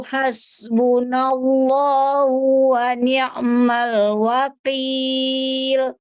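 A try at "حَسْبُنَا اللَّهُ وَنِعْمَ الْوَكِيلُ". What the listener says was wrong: Wakil bukan wakil lagi. Kurang ke depan. Qaf, kaf, wakil. Ya, kalau ke depan, ke belakang kan wakil.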